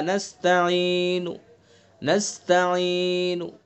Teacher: کلمے کے آخری حرف کو ساکن نہ کیا جائے بلکہ اس کی حرکت کا تہائی حصہ ادا کیا جائے، یہ صرف پیش اور زیر میں ہوتا ہے۔ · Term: وقف بالروم